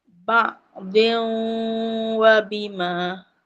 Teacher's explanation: idgham tu maksudnya masuk tanwin tu dia masuk ke huruf wau bersama dengung. Dengung mahunnah tu bersama dengunglah dua harakat. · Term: Idgham maal ghunnah, idgham ma'al gunnah